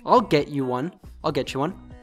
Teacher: American pronunciation, T plus Y. In American English, often when we have a T followed by a Y, even in different words, it becomes a ch sound.